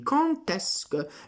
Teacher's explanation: Quindi quand est-ce que, ecco, vedete questa legatura di quand, la D ci diventa pronunciata come una T davanti al vocale, per legare